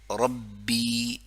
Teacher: ری را کو باریکی سے, کیونکہ را مکسورہ ہے, جب را کے نیچے کسرہ ہو تو باریکی سے. پھر ربی اگلی را کو بولڈ پڑھ لیں گے, پر کر کے پڑھ لیں گے کیونکہ زبر ہے